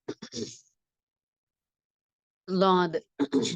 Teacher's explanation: நாவின் ஓரம் மேல் கடவாய் பற்களின் வலது அல்லது இடது ஈறுகளை தொட வேண்டும் குரல் அழுத்தமாக வாய் நிரம்ப ஒளிக்க வேண்டும் சரிங்களா நெக்ஸ்ட் டா டக்கு பார்த்தீங்கன்னா